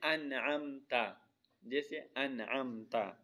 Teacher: ناک میں آواز نہیں لے کے جائیں گے، اور غنہ بھی نہیں کریں گے۔ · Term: اظہاری حلقی